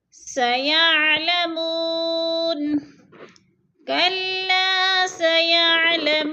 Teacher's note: وہ ساکن سے پہلے میم کے اوپر پیش ہے، تو وہ مدہ تھوڑا سا کھینچ کر پڑھنا ہے، 2 الف کے برابر۔ سیعلمون کلا سیعلمون، کلا سیعلمون ثم کلا سیعلمون، ثم کی میم مشدد ہے، سختی سے پڑھیں گے، جمع کر، اور لمبا نہیں کرنا کیونکہ زبر ہے۔